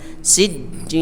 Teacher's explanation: jinnya tidak dipanjangkan 6 harokat, melainkan hanya 2 harokat saja. Tapi ketika waqaf dipanjangkan sijjin. Nah, silakan dari depan lagi. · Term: mad arid lis sukun